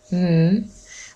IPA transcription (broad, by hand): m